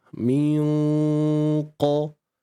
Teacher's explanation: nun mati bertemu dengan qaf, di sini hukumnya ikhfa hakiki. Dan dengung di sini perlulah tebal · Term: dengung tebal